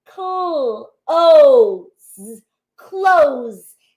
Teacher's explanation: that S has a little bit of a Z sound doesn't it